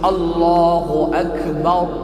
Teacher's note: Ra tafkhim yakni ra tebal, disebut Allahu akbar, tebal.